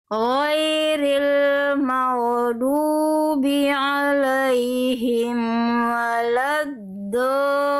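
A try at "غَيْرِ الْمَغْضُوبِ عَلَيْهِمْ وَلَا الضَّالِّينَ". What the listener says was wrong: Oke, tinggal di huruf ghain sukun Bunda. Pada kalimat maghdubi pastikan ghain sukun itu mengalir, jangan sampai ada bunyi vokal e-nya lagi. ghairil maghdubi alaihim.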